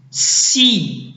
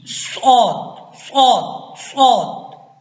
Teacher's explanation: اچھا، پہلے تو آپ نے سین اور صاد میں فرق رکھنا ہے۔ صاد جو ہے یہ موٹے حروفوں میں سے ہے، ٹھیک ہے، اس میں آواز موٹی ہوگی اور سیٹی بھی بجے گی۔